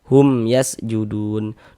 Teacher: Maka berarti hukumnya izhar syafawi. Maka kita baca jelas bunyi mim sukunnya tidak didengungkan, maka baca pendek saja. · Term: idhar syafawi